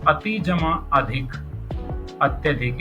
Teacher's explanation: तो यहां पर इ और अ को मिलाकर क्या बन गया? एक नया ही नई ही ध्वनि बन गई य। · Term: अर्ध स्वर में परिवर्तन